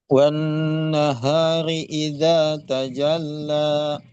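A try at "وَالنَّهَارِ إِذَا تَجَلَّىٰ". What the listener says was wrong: Coba yang lanya jangan sampai ada suara ini ya, tambahan hamzah ya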